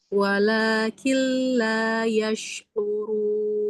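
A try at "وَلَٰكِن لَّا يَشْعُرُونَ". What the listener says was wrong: Bagus, itu bagus lamnya.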